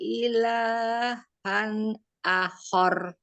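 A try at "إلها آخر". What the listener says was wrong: akhornya panjang khornya panjang ya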